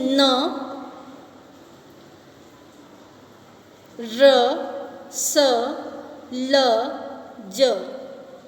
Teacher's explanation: वतर्स्य। जिन व्यंजनों के उच्चारण में जीभ की नोक मसूड़े को स्पर्श करती है वह वतर्स्य व्यंजन कहलाते हैं। जैसे न, र, स, ल, ज।